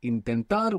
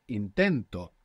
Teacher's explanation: we have the accent on the end when we put the O the accent is just before it